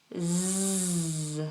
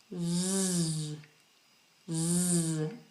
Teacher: the z sound that again is similar to a j it's the front of the tongue not the tip but the front of the tongue touching the roof of the mouth and allowing air to pass through